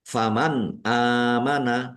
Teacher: Nun sukun bertemu dengan huruf alif. Bacaan izhar dibaca jelas.